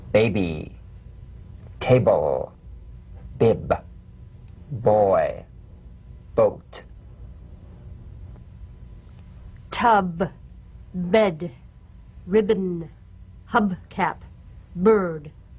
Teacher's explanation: and let them spring apart lightly play this on the springing away from contact not by pressing the lips together you'll feel a gentle voiced pulsation on the lips